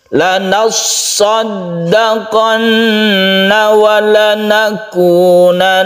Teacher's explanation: Ada shad yang berdesir, ada dal yang harus ditekan, ada nun yang harus gunnah.